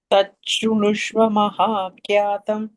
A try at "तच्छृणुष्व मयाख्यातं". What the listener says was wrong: मया not maha not maha kyatam maya kyatam